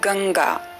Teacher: गंगा शब्द में जो यह बिंदु है वह हाफ ङ है